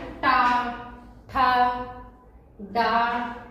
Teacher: जैसे बोले टा ठा डा, ऐसे बोलने के लिए जीभ ऊपर जाए झट से मुड़ के नीचे आ जाए तब वह मूर्धन्य होता है।